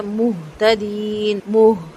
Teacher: ہا کی آواز بہت بھاری سے آئے گی سینے کے قریب سے اور ہونٹ مکمل گول ہوں گے